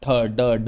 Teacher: तो आपकी जीभ मूर्धा में लगेगी जाके। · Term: मुरधन्य व्यंजन